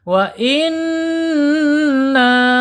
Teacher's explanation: yang panjang itu dengungnya saja gunahnya saja tapi nunnya pendek. Wa inna minal ya.